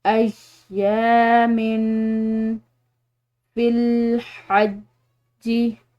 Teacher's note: यहाँ पर मीम की तनवीन है, इसके बाद फ़ा हरूफ फ़ा में से है, तो इस पर हम इख्फ़ा करेंगे